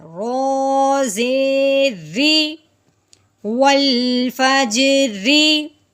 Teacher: را کے نیچے جب زیر آئے تو اس را کو باریک پڑھتے ہیں، ٹھیک ہے. رو زیر ری، روئی نہیں کرنا، ٹھیک ہے، را کو باریک پڑھنا ہے.